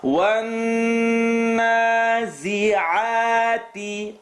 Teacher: Noon shadda. That's the full nasal sound.